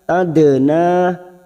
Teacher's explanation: Dal sukun yang mati asli di tengah kalimat, qalqalah sughra kita pandulkan. Tadna, na fathah diikuti alif 2 harakat.